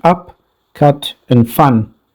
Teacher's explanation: as in up cut and fun its position clearly indicates that it's a central vowel between open and half open the lips are neutral